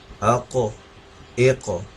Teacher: Lips گول ہو جانے چاہیے ہمارے. لپس گول ہوں گے آٹومیٹکلی لیٹر جو ہے موٹا ہو جائے گا